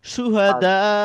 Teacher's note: হামজা সাকিনের মত উচ্চারণ করে আমাদেরকে থামতে হবে। এক্ষেত্রে এটাকে আমরা মাদ্যে মুত্তাসিলও বলতে পারি বা সংযুক্ত মাদ বলতে পারি।